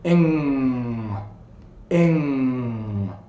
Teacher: So it may be a little bit longer than you think it is. This sound is voiced. Your tongue closes the back of your mouth and you can actually feel the sound in your nose.